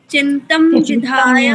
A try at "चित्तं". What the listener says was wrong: चिंतम नहीं चित्तम, चित्तम पढ़ो उसको।